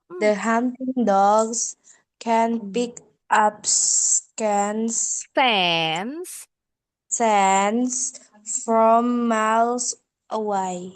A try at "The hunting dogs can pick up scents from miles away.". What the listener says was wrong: Nah, belum ada yang disambung-sambung. Tadi dibilang pick up disambung jadi pick up. Miles away disambung jadi miles away. Can ini bacanya jadi can. Bunyi A-nya jadi bukan E.